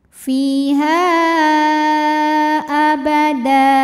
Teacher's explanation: huruf ha ini dipanjangkan boleh 4 boleh 5 harokat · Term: mad jaiz munfasil